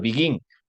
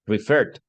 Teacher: Entonces, por ejemplo, begin, la última fuerza de voz, la fuerza de voz está en la última sílaba